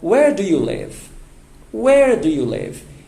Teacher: Então, a entonação para essa pergunta agora já é descendente, já é descendo. Ela não é mais raising sound, ela agora é falling sound.